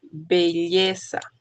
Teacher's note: Va a ser una letra bilabial, oclusiva y sonora.